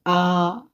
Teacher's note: इसमें सबसे अधिक मुंह खुलता है, इसलिए इसे विवृत स्वर कहा जाता है। विवृत का अर्थ होता है खुला हुआ।